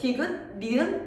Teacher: 디귿 니은 발음하면 같은 곳을 혀가 톡톡 건드린단 말이야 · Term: 잇몸 소리